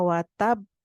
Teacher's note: ditahan dulu untuk B sakin yang pertama ba sakin yang kedua baru kita pantulkan menyempurnakan sifat Qalqalah watab B tidak watab watab itu langsung hanya ada satu ba